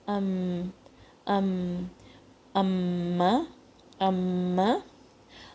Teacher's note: میم ادا ہوتا ہے لپس سے, by closing the lips together. دونوں لپس جو میں نے آپ کو بتایا تھا کہ جو ہمارے مخارج ہوتے ہیں اس سے ساؤنڈ پروڈیوس ہوتا ہے اگر دو پارٹس آپس میں کسی بھی طرح سے ان کانٹیکٹ آتے ہیں.